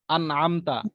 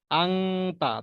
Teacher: এই নুন সাকিনকে এবং এই তানবিনকে গুন্না ছাড়া স্পষ্ট করে বলতে হবে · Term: ইজহারের নিয়মটা